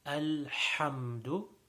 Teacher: the best way to stress on that ha is to flex the inside of the throat, the middle of the throat, is to limit the airway, or to flex it in a way that when the air comes out, it comes out with a very sharp ha sound. So it's kind of like, when you breathe out after having mint gum, that nice sound. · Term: the big ha